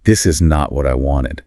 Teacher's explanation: The pitch, the volume, everything drops.